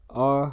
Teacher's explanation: इसका उच्चारण स्थान कंठ है, ह्रस्व है, मध्य है जीभ के आधार पे, मुख विवर अर्ध विवृताकार बनेगा, ओठ की स्थिति उदासीन रहेगी, मतलब ओठ का इसमें कामा नहीं है।